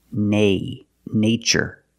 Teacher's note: first let's focus on the first syllable in these two words in the first word we use the long a like day and say